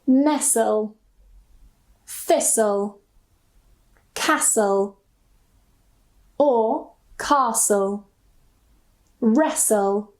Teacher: Usually, we don't pronounce the T. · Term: silent